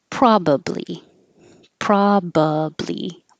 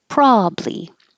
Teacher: You can say with three syllables, probably, probably, or two syllables, probably.